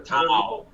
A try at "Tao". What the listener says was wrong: It's not pronounced with a T sound. It's a D sound.